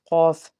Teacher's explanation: قاف حروف مستعلیہ کا حرف ہے، اس کو ہم نے پر پڑھنا ہے